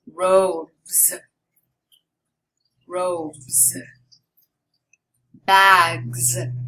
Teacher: Now the final S is pronounced Z, Z, like a Z, after voiced sounds, such as D, B, G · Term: Z sound